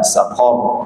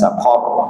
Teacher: saqar kita berhentikan ra itu dalam keadaan ra yang tebal